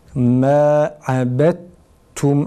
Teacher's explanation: Abedtum kelimesinde dalı ta harfine çeviriyoruz ve ta'yı ta'da idgam yapıyoruz. Ma abedtum, abedtum değil.